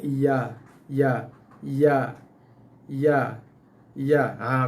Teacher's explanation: Bahagian tengah lidah kita je yang berfungsi, yang bergerak menuju ke atas langit. Daripada macam ni lidah kita sekeping, tengah lidah kita akan naik ke atas menghampiri kawasan langit tengah dalam mulut kita tu untuk keluarkan bunyi ya.